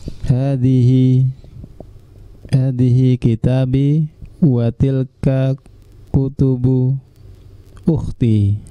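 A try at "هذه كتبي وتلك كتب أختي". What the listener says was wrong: Ini janggal enggak kalimatnya? Janggal enggak? Yang pertama dibacanya kitabi, yang keduanya dibacanya kutubu. itu kan bacanya panjang ya. Kitab. Berarti setelah taknya itu kan ada alifnya. Kitabi.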